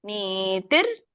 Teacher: ನೀತಿರ್ ಅಲ್ಲಿ ಅರ್ಕಾವಳಿ ಇದೆ ನೀತಿರ್ ನೀ ಎಳಿಬೇಕು